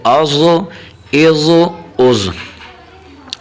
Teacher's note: یہ حرف ضاد ہمیشہ موٹی پڑھی جائے گی، بریک نہیں پڑھی جائے گی